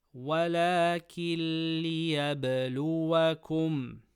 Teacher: Nun sakina before lam, idgham without ghunnah.